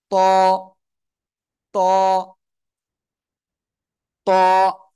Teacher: জিহ্বার আগা দুই দাঁতের গোড়ায় লাগান লাগিয়ে এক আলিফ টা উচ্চারণ করবেন আর মোটা আওয়াজে পড়তে হবে